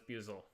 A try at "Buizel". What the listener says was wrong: It's also pronounced Buizel, not Boozle. There's an I there. Buizel.